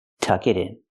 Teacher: The T in it changes to a fast D